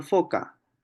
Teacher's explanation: Es la K, pues, ¿no? Es la oclusiva velar sorda.